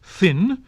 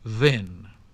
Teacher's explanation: either the voiceless th as in thin, or the voiced sound as in then